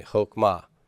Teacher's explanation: Without that meth egg, what does that tell you about this vowel? It is an O. It's a short O. It's a kametz ketuf.